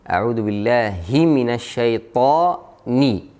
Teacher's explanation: Jangan hi minasyaitan atau he minasyaitan. Kita harus jelasin kasrah yang ada di ha dan juga kasrah yang ada di nun.